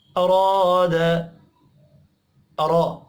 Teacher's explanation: अराद, अरा, रा को ज़बर की वजह से पुर पढ़ना है। अलिफ मद्दा को एक अलिफ के बराबर खींच कर पढ़ेंगे।